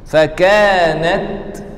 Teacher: ada angin jelaskan angin di huruf ta